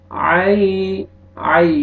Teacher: یا لین، یا ساکن سے پہلے زبر ہے، نرمی سے ادا کریں گے